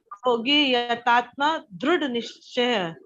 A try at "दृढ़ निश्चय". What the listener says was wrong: दृढ़ नहीं दीदी, दृढ़. फुल ढ. दृढ़.